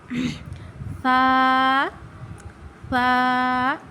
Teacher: یہ حروف لثویہ میں سے ہے، یہ زبان کا سرا اوپر کے دانتوں کے اندرونی کنارے سے ادا ہوتا ہے